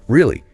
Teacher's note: Now say it with a rising tone like you're surprised or interested.